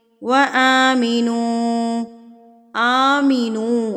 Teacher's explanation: حمزہ کے اوپر کھڑی زبر ہے تو اس کو ہم 2 حرکات کے برابر کھینچیں گے۔ آمینو پڑھا جائے گا، آمینو نہیں پڑھا جائے گا، اس کو ہم نے 2 حرکات کے برابر الف کو کھینچنا ہے۔